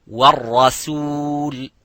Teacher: So the ra is mufakham, as you can see, but the sin is muraqqaq.